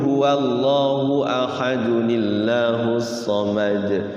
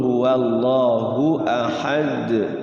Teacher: kalau wasol tidak terjadi qalqalahnya, tapi kalau waqaf baru terjadi. Ahadunillah tuh kalau diwasul tidak terjadi.